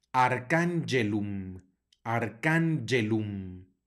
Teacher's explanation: tenemos una g a la cual sigue una e por lo tanto no va a sonar como J sino como y